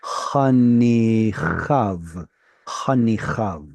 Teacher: unfortunately we don't pronounce the yod